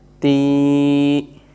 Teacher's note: after kasra, whenever ya comes with sukoon, it is a madda letter. We make the sound longer.